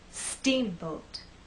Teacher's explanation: the second part to be softer let's try that Steamboat now we also need to make that first part longer and then the second part will be shorter · the first part of the word is the stressed part so when we say Steamboat I want the first part to be loud and the second part to be softer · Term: word stress